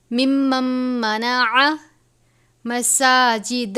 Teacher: ومن اظلم ممن، نون ساکن کے بعد میم مشدد ہے حروف یرملون میں سے، تو ہم اس کو ممن نہیں پڑھیں گے بلکہ اس نون کو میم سے ملا دیں گے، مم پڑھیں گے. میم مشدد ہے، غنہ کریں گے.